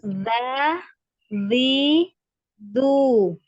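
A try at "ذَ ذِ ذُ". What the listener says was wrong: Hati-hati jangan naik. Va, va, ya. Jadi tipis ya, jangan dinaikkan pangkal lidah.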